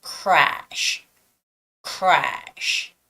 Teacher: So your lips get pulled at R and then the SH.